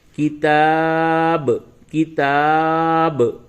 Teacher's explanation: با کی آواز میں ٹکراؤ پیدا ہوگا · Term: قلقلہ